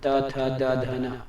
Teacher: अब देखिए दंत से कैसे उच्चारण करें, त थ द ध न बोल के देखिए, त थ द ध न बोलने पर आपका जीभ जो है ना, इंसान का जो जीभ है दांत के नीचे आके दबने को रेडी रहता है, त थ द ध न। या फिर हर उच्चारण में जो जीभ है दांत को जाकर टकरा रहा है, ऊपर वाले दांत को, नीचे वाले नहीं, त थ द ध न, देखिए कभी ऊपर कभी नीचे, मेनली ऊपर वाले दांत को जाकर टकरा रहा है, ठीक है।